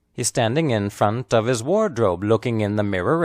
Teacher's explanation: the important content words are standing front and Wardrobe the unstressed words are he's in of his these words are